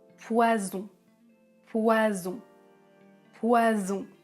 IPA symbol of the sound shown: z